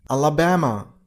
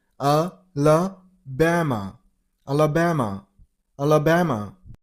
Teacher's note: You gotta stress on the third syllable.